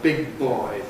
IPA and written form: ˌbɪg̚ ˈbɔɪ (big boy)